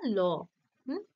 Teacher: শ্বাস বায়ু জীভের দুই পাশ দিয়ে বেরিয়ে আসে দুই পাশ দিয়ে যেহেতু বেরিয়ে আসে সেইজন্য সেই ধ্বনিকে বা সেই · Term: পার্শ্বিক ব্যঞ্জন ধ্বনি